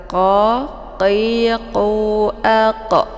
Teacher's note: di pangkal lidah dekat dengan anak teka. Jadi cara bacanya itu ditebalkan.